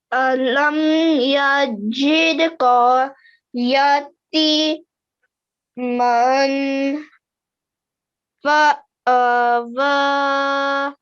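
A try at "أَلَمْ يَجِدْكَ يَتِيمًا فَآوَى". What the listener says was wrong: Now over here, I want you to make a bit more of a bouncing sound for the dal. Okay, jid. Over here, remember, this is a ya mud.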